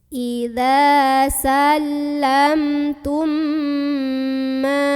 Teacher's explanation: Maka cara membunyikannya, mim yang sukun dileburkan atau dimasukkan ke mim kedua sambil dengung dulu. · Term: idgham mimi